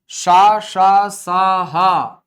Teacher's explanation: शा, शा, सा, हा इन वर्णों का उच्चारण अधिक श्वास की मात्रा से होता है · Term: महाप्राण